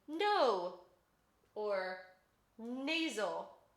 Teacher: our second nasal consonant is an alveolar nasal and that is when the tip of your tongue is against your alveolar ridge and your soft palate is relaxed